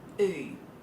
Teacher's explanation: In an Australian dialect, a broader Australian dialect, on the oo sound, your lips will stay a little bit square. Ooh. and your tongue does the work.